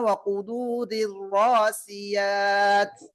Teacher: ராவுக்கு மேல் ஷத்தா பெற்ற ரா ஃபத்ஹா பெற்று வரனால் வல்லினமாக ஓத வேண்டும். இங்க நிறுத்தும் போது தாவுக்கு சுக்குன் வைத்து நிறுத்த வேண்டும்.